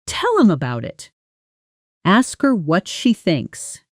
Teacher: The way him, her, and them often lose their H sound completely in casual speech when they come after a verb. Tell him becomes tell 'em.